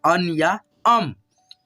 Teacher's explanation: इस अनुस्वार को हम लोग आधा न और म के रूप में उच्चारण करेंगे